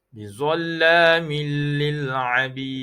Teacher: Tanwin bertemu huruf lam, hukumnya idgham bila gunnah. Tak boleh dengung.